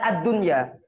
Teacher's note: untuk lam al yang ini itu dibaca ad-dunya, alnya tidak dibaca